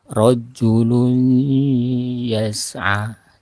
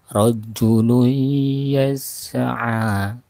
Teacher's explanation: jadi ditahan, dipanjangkan, ditahan, kemudian terasa udara itu keluar dari mulut dan hidung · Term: guna